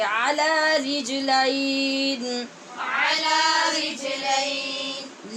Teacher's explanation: جیم پہ قلقلہ ہوگا، اور لام کے بعد یا لین ہے ، اس لیے اس کو لام کی زبر کو آواز اٹھا